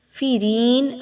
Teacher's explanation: فیرین، را زیر یاری، را کی ادائیگی یہاں پر باریک ہوگی کیونکہ را کے نیچے زیر ہے اور را زیر یاری ہے تو یا مدہ آ گیا، 1 سے 2 الف کے برابر اس کی ادائیگی رکھتے ہوئے پڑھیں گے۔